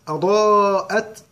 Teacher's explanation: الف عليها علامه مد قلنا باي شوف الصفحه كلها القران كله علامه مد بعديها همزه اربع حركات